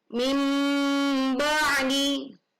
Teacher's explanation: nun sukun bertemu huruf ba, maka dibunyi nun sukun diganti bunyi mim sukun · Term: iqlab